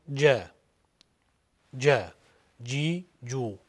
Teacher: Jim undoshini til o'rtasidan aytiladi deydi qiroat ilmi ulamolari. Bu undosh bizning o'zbek tilidagi j'dan ko'ra sal qattiqroq aytilar ekan.